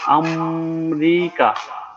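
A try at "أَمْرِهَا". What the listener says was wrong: কাপ না তো হা হবে। হা হবে হা।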